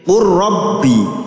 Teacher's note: Setiap lam sukun bertemu ro maka dibaca idgham. Lamnya hilang menjadi ro tasydid. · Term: idgham mutaqaribain